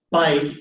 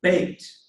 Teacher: the AY diphthong went to A